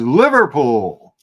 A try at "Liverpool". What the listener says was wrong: Yeah, don't pronounce the L because in England, in locals, it's Liverpool. Liverpool.